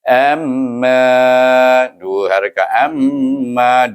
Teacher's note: Iaitu kita ada hukum wajib gunah apabila mim bertasydid atau nun bertasydid. Di sini mim bertasydid, kita gunahkanlah dia, dengungkan dia.